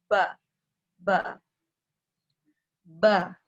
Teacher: ba Arab tidak boleh keluar nafas. Ya. Ba, ya.